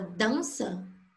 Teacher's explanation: Tem o som do AN, que é o A anasalado, com o tio.